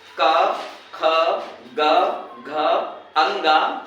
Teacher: हम जो वायु होती है वो कंठ से स्पर्श करती है इसलिए का वर्ग का उच्चारण स्थान कंठ है